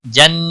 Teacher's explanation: جن نون مشدد پر غنہ ہوگا.